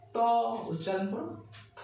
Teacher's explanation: দেখো জিভটা কি হচ্ছে মূর্ধায় গিয়ে ঠিকছে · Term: মূর্ধন্য বর্ণ